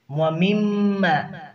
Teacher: اور ناک میں آواز جائے گی، غنہ ہوگا، اور یہاں پر مشدد ہے، اس کی ادائیگی 2 الف کے برابر کریں گے۔ وَمِمَّا رَزَقْنَاهُمْ، رَزَقْنَاهُمْ میں جو زا ہے اسے سختی کے ساتھ پڑھیں گے، آگے قاف ہے اسے پر کریں گے۔